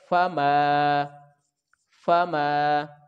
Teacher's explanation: میم کے اوپر زبر ہے اور آگے الف ہے تو اس کو ایک الف کے برابر کھینچیں گے